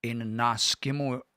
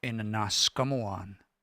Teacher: I won't hear a ya sound there. I'll hear a wa.